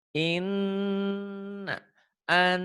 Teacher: Dibaca double, dengung ke hidung dan ada madnya, ada panjangnya. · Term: gunnah